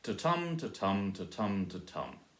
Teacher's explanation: Each one, the first line there, each one has half of them are stressed and half of them are unstressed, and it's alternating the first, third and fourth lines.